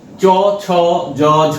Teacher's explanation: চ, ছ, জ, ঝ যখন আমরা উচ্চারণ করছি তখন জীবভার অগ্রভাগ তালুতে স্পর্শ করছে এবং মুখবিবরের যে তালু অংশটা আগের দিন আমরা মোটামুটি একটা রাফলি যদি দেখাই তাহলে এই অংশটা হচ্ছে তালু। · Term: তালবোধন